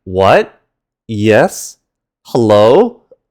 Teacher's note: This one is the high rising tone. This is another fairly simple one and it's as if you're sharply asking a question like what?